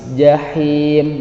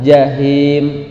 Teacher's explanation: Jahim ada huruf H, maka ketika dibaca suaranya tipis.